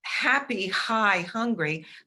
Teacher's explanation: happy high hungry those are aspirated in english